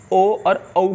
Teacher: इनका उच्चारण करते समय ध्वनि कंठ और ओष्ठों से निकलती है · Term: कंठोष्ठ